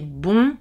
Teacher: C'est pareil pour beau, pas nasal, mais bon, nasal. C'est le même mot, mais dans bon, la voyelle est nasalisée.